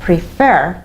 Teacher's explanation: The stress was on the second syllable, on F, prefer.